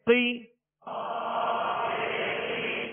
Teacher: قاف کو پر پڑھیں گے، 2 نقطے والا قاف ہے اور یہ حروف مستعلیہ میں سے